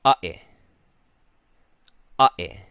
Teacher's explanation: And this is going to mean there's two sharp sounds. There's a sharpness at the front and a break in the middle. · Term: ʻokina